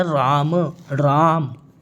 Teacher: तो राम पे रा पे क्या पड़ रहा है? दबाव पड़ रहा है। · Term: बालघात